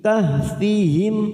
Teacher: mim sukun kita baca jelas tanpa mendengung karena bertemu namanya bacaan idhar syafawi kahfihim fathha berdiri atau Alif